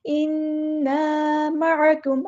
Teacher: عین کو مستہلک یعنی مڈل تھروٹ سے ادا کرنا ہے، کاف کو باریک ادا کرنا ہے، اور میم پہ ہم نے ٹائم نہیں لگانا کیونکہ اظہار شفوی ہو رہا ہے۔